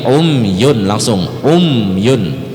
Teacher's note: itu umyun tidak perlu didengungkan Pak ya Um sama Um itu Mim mati ketemu ya maka dia izhar syafawi jangan didengungkan jadi bukan umyun tapi umyun langsung karena dia izhar ha izhar · dia izhar ha izhar syafawi ya namanya jelas di dua bibir Memang bibir kita rapat kan Um tapi jangan lama